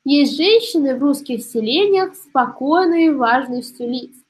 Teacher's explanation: У нас получается три позиции в стопе. Две безударные и одна ударная. В связи с этим мы делаем вывод, что перед нами трехсложная стопа. Ударение падает на второй слог. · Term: амфибрахи